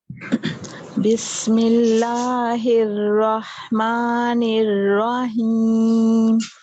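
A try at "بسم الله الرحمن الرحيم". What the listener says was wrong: البسملہ کو دوبارہ پڑھیں گے اور را کو پور کرتے ہوئے.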